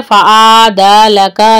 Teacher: फसव्वाका वाव होंठों को गोल करेंगे और खड़ी हरकत है तो 2 काउंट करेंगे, एक अलीफ के बराबर। फ़अदलक आइन को वाज़ेह करें और एक हरकत करना है। फ़अदलका लंबा लंबा नहीं करना है।